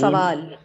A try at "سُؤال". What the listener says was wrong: سؤال، سوال نہیں سؤال. سؤال واو کے اوپر، ہم اردو میں اس کو سوال کہتے ہیں واو کے ساتھ، عربی میں یہ سؤال کے ساتھ ہے کیونکہ مادے کا حروف کیا ہے؟ سین، حمزہ اور لام.